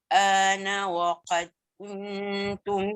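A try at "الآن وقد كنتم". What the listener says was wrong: Waqad tu bunyikan sikit qalqalah.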